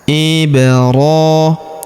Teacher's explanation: Huruf ro kita panjangkan dua harakat karena di atasnya terdapat tanda alif kecil yang ini.